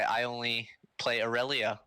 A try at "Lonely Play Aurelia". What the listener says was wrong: Yeah, well, it's actually not I Only Play Aurelia, it's Lonely Play Aurelia, so. No, Lonely. an L.